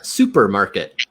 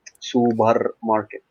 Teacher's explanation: So it sounds like you're taking the P the uh unvoiced P sound and turning into a voiced B sound in Arabic